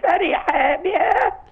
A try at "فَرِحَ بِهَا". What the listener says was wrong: في ألف فرح بها ما فيش ألف بعد الحاء